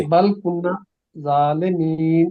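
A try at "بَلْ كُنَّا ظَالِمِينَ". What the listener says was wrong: کن نا کو لمبا کریں پھر۔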